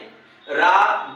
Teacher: रा दंत मूल वर्ण है दंत मूल और मसूड़ों से इसको उच्चरित किया जाता है